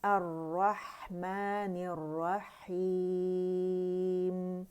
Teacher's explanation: लाम नहीं पढ़ी, मुशद्दद हमने रा पढ़ी क्योंकि लाम जो है रा मुशद्दद में मदगम हो गया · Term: लाम शमसिया